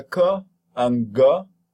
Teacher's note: your tongue is rising in the back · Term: velar sounds